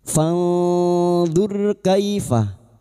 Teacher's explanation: ro sukun yang didahului dzuma kita baca tafkim